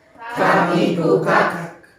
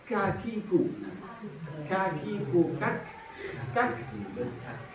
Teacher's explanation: Maka ini kalau dalam sifat huruf itu disebut hamas. Jadi ada nafas yang terlepas keluarnya.